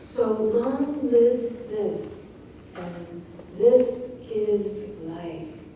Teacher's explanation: So suddenly you'll be slowed down even more. And you have 3 syllables that are quite strongly stressed in a row. And a little conjunction connecting to the second part.